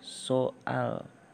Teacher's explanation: kata saat selanjutnya glut isasi yaitu penambahan bunyi yang sertaan yang dihasilkan dengan cara glotis ditutup sesudah bunyi utama diucapkan sehingga terdengar [Musik] bunyi jeda yang disimpulkan dengan tanda tanya sehingga · Kan dalam kata soal itu ada jedanya antara O dan A. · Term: glottalisasi